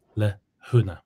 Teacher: And h-prothesis, that's adding H before a vowel.